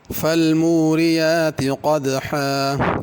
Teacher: قاف کو پر کرنا ہے اور حا بڑی پڑھنی ہے